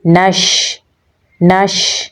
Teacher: नून को शीन के साथ मिलाएंगे क्योंकि शीन के ऊपर जज़म है तो इसमें सिफ्त तफशी पाई जाती है। तो इसको पढ़ते हुए इसकी आवाज़ मुंह में फैल जाएगी